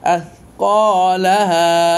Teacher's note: আলিফ খালি ডানে জবর এক আলিফ পরিমাণ টান